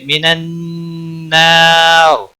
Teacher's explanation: من النار نون مشدد پر گنہ ہوگا، الف مدہ ہے، ایک الف کے برابر کھینچ کر پڑھیں گے، نا را وقف کی صورت میں را ساکن بن جائے گا، پر بھی پڑھا جائے گا، اور ملانے کی صورت میں باریک بھی پڑھیں گے اور را کی زیر کو بھی پڑھا جائے گا۔